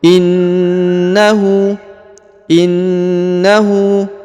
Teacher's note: huruf na harakat tasdid maka ditahan dan ditekan dua harakat